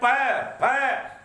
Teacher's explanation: उपधमा माने कांपना, होठ फड़फड़ाते हैं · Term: उपधमानीय